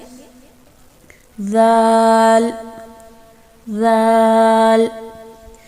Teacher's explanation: जाल का मखरज भी वही है जो सा का मखरज है। ज़ुबान की नोक को ऊपर के सामने वाले 2 दांतों के अंदरूनी किनारे से लगाकर बारीक आवाज़ में अदा करेंगे